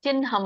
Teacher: ಮ ಬರುತ್ತೆ ಚಿಹ್ನ ಬಟ್ ಚಿಹ್ನ ಅನ್ನಂಗಿಲ್ಲ ಅದಕ್ಕೆ ಚಿನ್ಹಂ ಅಂತ ಹೇಳಬೇಕು ಅಂದ್ರೆ ಮೊದಲು ನ ಹೇಳಿ ಆಮೇಲೆ ಹ ಹೇಳಬೇಕು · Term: ಸಂಯುಕ್ತಹಕಾರ